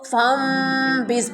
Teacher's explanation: نون ساکن کے بعد اگر با آ جائے، ٹھیک ہے، تو اس نون کو میم میں بدل دیتے ہیں، جو کہ ہم پڑھتے ہیں تو چھوٹا سا میم لکھا ہوتا ہے اس کے اوپر۔ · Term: اقلاب